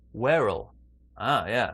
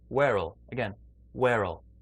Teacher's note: take the r from where we join it